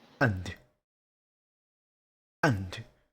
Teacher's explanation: Don't say anda. You're kind of putting a vowel after and.